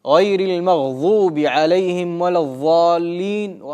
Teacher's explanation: Некоторые заменяют букву «дад» на межзубную твердую «за».